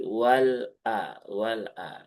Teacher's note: hamzahnya harus ditahkikkan, artinya diperjelas ya, jangan sampai dibaca dengan wala ya. Ya, tapi wal a wal a karena masih banyak ee sahabat-sahabat yang membaca dengan hamzahnya seperti lebih ringan ya sehingga seperti ee bersatu antara lam sukun dengan hamzah.